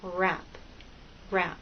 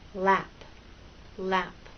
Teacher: tongue is pulled back it's like in a small Tight Ball the tongue is more tense for wrap for r than it is for lap